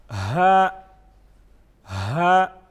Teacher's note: یہ حلق کے آخری حصے سے ادا ہوگا